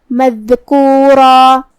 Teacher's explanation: اور ہم کلمت مذکورہ پہ رکیں گے تو اس پہ مد الف سے رکیں گے جو کہ مد الف اپنے پیچھے والے حرف کا حکم لیتا ہے تفخیم میں اور ترقیق میں، تو اس سے پہلے حرف الرا کا حکم ہے تفخیم تو ہم را کو اور مد الف کو دونوں کو بھاری آواز میں پڑھیں گے